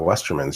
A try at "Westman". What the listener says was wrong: I think you said Westerman. I think you meant Westman.